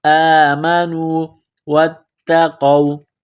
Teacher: ولو انہم آمنوا حمزہ کڑا زبر آ میم زبر ما نون واو پیش نو آمنوا واتقوا واو کو تا کے ساتھ ملانا ہے، تا میں سختی کرنی ہے، قاف کو واو کے ساتھ ملانا ہے، قاف کو موٹا کرنا ہے۔